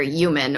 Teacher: the H is often dropped in some American dialects